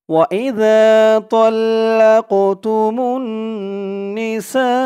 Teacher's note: এই এক আলিফ টানটা 3 আলিফ টান হয়ে গেছে মধ্যে মুত্তাসিল